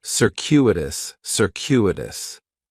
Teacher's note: The stress is going to be on that second syllable, and that CU is kind of like you're saying the letter Q, circuitous, circuitous.